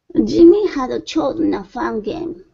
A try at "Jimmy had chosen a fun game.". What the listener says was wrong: Okay, let's try that again. Instead of hadda, chosen, had chosen. Jimmy had chosen a fun game.